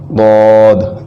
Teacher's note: ضاد جو ہے یہ زبان کی کروٹ اور اوپر کی داڑھوں کی جڑ سے ادا ہوتا ہے